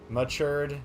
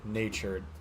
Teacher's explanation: So matured, which I think is the schwa, and natured, which is something else.